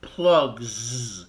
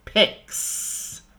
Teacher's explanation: you add a Z because the G is voiced at the end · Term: voiced sound